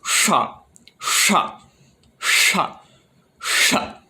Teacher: And then this next one I've heard described as a hard sh. So it's kind of like the English sound sh, as in shore or shell, but quite far back and quite strong. So sh, sh, sh, sh.